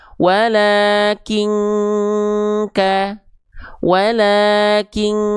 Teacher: disamarkan, didengungkan masuk hidung ya dan ditahan dua harakat. Ketika samar dengung sambil bersiap-siap melafalkan huruf kafnya. · Samar bukan cuma sekedar samar tapi masuk hidung. Ah itu disebut dengan ikhfa.